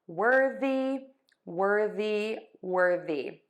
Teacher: have a slight syllable break between the were and then the the th here is voiced that's the difference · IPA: /ˈwɜrði/